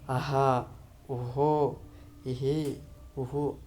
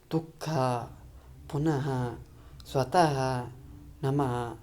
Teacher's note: ಈ ವಿಸರ್ಗಗಳು ಬಂದಾಗ ಹಕಾರಕ್ಕೆ ಸಮೀಪವಾದಂತ ಉಚ್ಚಾರ ಬರ್ತೈತೆ